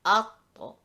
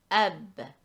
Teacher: they have the attribute of jahar, which means stoppage of the airflow, and also they have the characteristic of shidda, which is the stoppage of sound flow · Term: Qalqalah